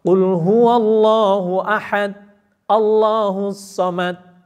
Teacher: Jadi dal kalau mati mesti mantul. Kalau tidak mantul berarti sifatnya hilang. Kalau sifatnya hilang akan ketukar sama ta.